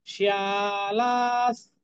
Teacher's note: শিয়া এবং লা দুটি দীর্ঘ উচ্চারণ হবে।